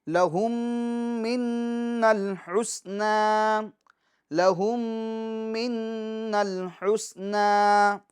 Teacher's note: لہم اس کے میم ساکن میں ادغام شفوی ہوگا کیونکہ میم ساکن کے بعد دوسری میم آ رہی ہے۔ منل نون مشدد میں گنہ ہوگا۔